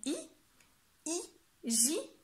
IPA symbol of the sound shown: i